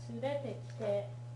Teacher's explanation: So it goes up on the re and the te. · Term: pitch accent